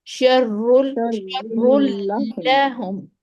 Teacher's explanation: जुबान के पिछले हिस्से को ऊपर उठाना है। उसके बाद लाम के मखरज पर बिछा देना है, बस ठहरा देना है जुबान को।